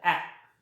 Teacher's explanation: आपली जीभ वर जाते बरं, जास्तीवर नाही, समोरचा भाग जिभेचा. A. So front part of the tongue is used.